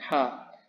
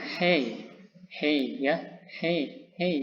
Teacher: suara yang dihasilkan dari the flow of air through a narrow glottis. Jadi suara yang dihasilkan berdasarkan rongga pita suara sampai menuju ujung pangkal lidah. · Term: glottals